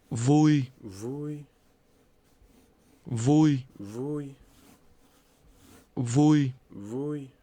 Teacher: This is pronounced with a mid-level tone.